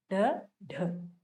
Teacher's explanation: ताड़न जात कहा जाता है क्योंकि ये दोनों वर्ण फेंक कर बोले जाते हैं, और इन्हीं को उत्सिप्त कहते हैं क्योंकि उछल करके बाहर आते हैं, और द्विस्पृष्टीय भी कहते हैं क्योंकि यह बोलते वक्त हमेशा जीवा के दोनों तरफ से हवा बाहर आती।